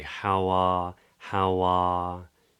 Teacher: is it's just a single vowel it's an open space R in British English we don't say R like the Americans or Canadians or Irish or Scottish speakers do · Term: standard southern British English